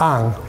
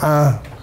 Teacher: you get sometimes the full syllable ang. Sometimes it's reduced to just the nasalized vowel a.